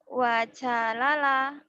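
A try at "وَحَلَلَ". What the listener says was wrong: Wahalala. Nggak ada titiknya. Nggak ada titiknya. Wahalala. Memang huruf Arab itu bingungnya tuh bedanya cuma di titik doang.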